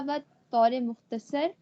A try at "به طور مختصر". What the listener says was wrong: با نہ پڑھیں آپ ہمیشہ اس کو با پڑھتے بے بانی بے طور مختصر توضیح خواہیم داد.